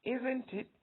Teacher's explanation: So you find that my tone rises now on the second part of the question. Isn't it? Tone rises. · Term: rising tone